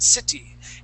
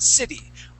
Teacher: it really should be pronounced city, where we pronounce it as a D